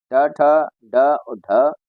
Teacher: इन सभी का उच्चारण स्थान मूर्धा होता है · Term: मूर्धन्य